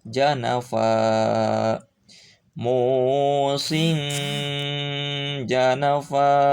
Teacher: Janafa asalnya janafan, karena diwakafkan maka hilang tanwinnya, baca 2 harakat